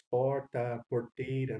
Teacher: na Corumbá e Ladário, a presença do R retroflexo